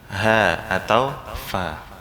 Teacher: Atau dia rakhawah, lemah, lepas. Seperti misalnya Ha, atau Fa. Huruf-huruf yang tidak ada yang menahannya.